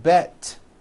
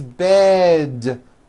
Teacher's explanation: voicing towards with d endings bed has a voiced d ending it's not bet with an unvoiced T it's bed with a voiced D